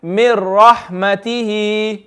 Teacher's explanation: So it's almost as if you're skipping, isn't it? You're basically going straight from the meme straight to the ra. You're skipping the noon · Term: idgham tam